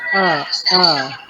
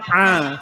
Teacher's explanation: makhraj huruf ain dia a, sepit